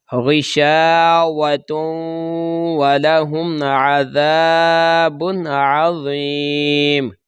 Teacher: یہ تنوین کے بعد عین حروف حلقی یا حروف اظہار ہے، لہذا غنہ نہیں کریں گے